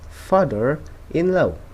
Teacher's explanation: The word after father begins with a vowel sound, and the rah sound are pronounced. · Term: linking R